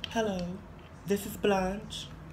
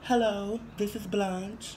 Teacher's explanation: It was not high. It wasn't high pitched. It wasn't soprano. It wasn't Mickey Mouse. It was breathy.